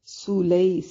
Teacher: سین کو باریک سیٹی کے ساتھ ادا کریں گے